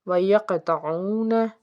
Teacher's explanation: قاف کے اوپر جزم، تو یہ حرف قلقلہ کا حرف، یہاں پہ جھٹکا دے کے اس کو پڑھیں گے اور پر پڑھیں گے کیونکہ کاف ہے حرف مستعلیہ کا حرف۔